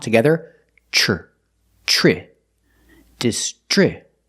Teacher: The tr makes the chch- sound like chicken plus the r sound.